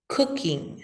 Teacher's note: So cook is one of the examples that you can remember with the lax U. And then in the ing ending, we have a lax I and a velar N